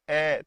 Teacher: कंठ में कहां होते हैं कंठ में बोल के देखिए अ तो अंदर से आवाज आएगी कंठ से आपके आवाज आएगी